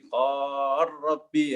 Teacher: Misalnya idghamnya nanti beda. Misalnya riwayat Susi ya qala rabbi menjadi qar rabbi ya.